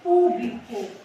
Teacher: Qual que é a sílaba mais forte que nós pronunciamos com mais intensidade o pu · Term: proparoxítona